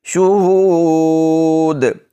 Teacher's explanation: شہود ایسے کریں گے وقف، کیونکہ دال کو ہم نے ساکن کیا تو پھر قلقلہ بھی کریں گے.